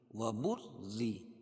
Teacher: را باریک ہوگی کیونکہ رائے مشددہ کے نیچے زیر ہے، را کے اوپر تشدید اور کے نیچے زیر ہے۔